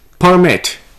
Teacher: the noun form is permit stress being on p e r the verb form is permit here the stress is on mit